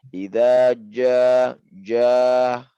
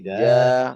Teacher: Ya di sini masih banyak mengeluarkan huruf pada ja ya, itu sifat hamas ya. Jadi ja ini jim di sini bukan masuk dari bagian sifat hamas ya Pak, tapi jahar. Jadi jangan idza ja-nya jangan dikeluarkan anginnya. Sembunyikan lagi lebih dalam.